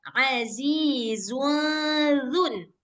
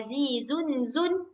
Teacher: si zai ini enggak perlu keluar lidah. Sementara zal keluar lidah.